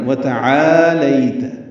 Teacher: واو تا جلدی پڑھنا ہے، آ لمبا کرنا ہے